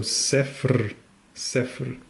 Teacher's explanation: the trick is to say sef and then add like a rolling R afterwards. So sefr, sefr.